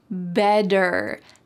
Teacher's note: In American English, a T that is surrounded by vowels or vowel sounds will change to a D.